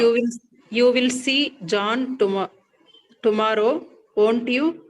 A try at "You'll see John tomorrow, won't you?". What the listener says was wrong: pronounce this as you'll. You'll see John tomorrow, won't you? Okay, you'll see John tomorrow.